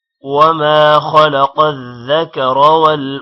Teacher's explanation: وما الف کی وجہ سے ما تھوڑا لمبا ہوگا